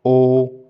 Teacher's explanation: उ बोलेंगे तो वृत बन जाना उ बड़ा उ बोल रहे तो भी व्रत बन रहा है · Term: वृत मुखी स्वर